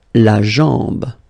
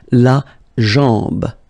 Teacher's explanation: A-M, when you combine these two, basically it's just like A-N, so it's nasal and it's en